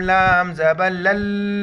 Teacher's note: شد ہے لام کو لام کے ساتھ ملیں گے اور سختی سے پڑھیں گے